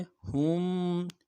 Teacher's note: ہا کو میم ساکن کے ساتھ ملانا ہے، میم ساکن میں غنہ کریں گے